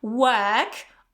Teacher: in the British variety, it's going to be work. Okay, so you don't pronounce this R, work, or American variety, work, work.